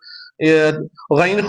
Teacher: غین خا ابتدائی حلق سے ادا ہو رہا ہے